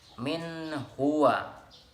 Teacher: tidak ada dengungan, tetapi dia dibaca jelas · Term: Izhar